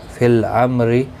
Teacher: فی الامر میم ساکن کے بعد را آیا ہے، اظہار شفوی ہوگا. را زیر کی وجہ سے باریک پڑھا جائے گا